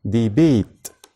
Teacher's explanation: حرف ال A زي كلمة ديبيت. لو بصينا كده على حرف ال A اللي قبل ال T هنلاقينا ان احنا طولنا فيه شوية